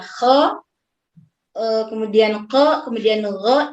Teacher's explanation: Kalau istifal kan tadi menurun ya. Maka kha, gha dan qa itu tidak istifal karena ada sebagian lidahnya yang naik. Nah, sedangkan dia tetap dia memiliki sifat infitah karena dia tidak itbaq, ya. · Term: isti'la